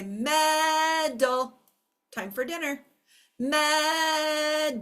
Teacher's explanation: the first syllable is accented the accent is right here Med second syllable is not accented